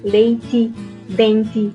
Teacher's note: a não palatização dos grupos de e ti